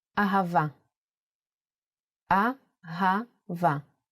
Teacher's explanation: Hey can sound like both Ha and Ah. The word Ahava uses it in both ways. When Hey appears in the end of the word, it will always sound as Ah.